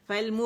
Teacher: مو میم کے مخرج پہ گئے، اس کو پکڑا، پھر اس کو پیش دیا، باریکی سے ادا کیا